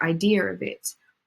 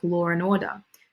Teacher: So we add in that extra linking R there.